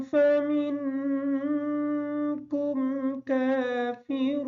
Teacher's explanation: فَمِنکم کا جو نون ہے یہ نون ساکن کا ہم غنہ کریں گے، کاف کو باریک پڑھیں گے۔